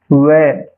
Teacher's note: व होठ की आकृति इसमें मुड़ जाती है। इसलिए दांतों के साथ होठ का उच्चारण आएगा। दंतोष्ठ। प्रश्न संख्या 29 श की ध्वनियां क्या कहलाती है?